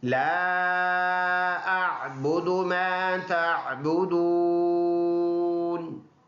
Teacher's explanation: تو لا کے اوپر چھوٹا مد ہے، 2 سے 3 الف کی مقدار لمبا کر کے پڑھنا ہے